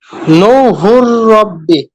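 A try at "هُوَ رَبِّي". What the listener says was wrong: হ্যাঁ, ঠিক আছে, মাশাআল্লাহ, সুন্দর হয়েছে।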